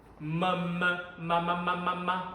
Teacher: 미음은 입술이 붙어서 나지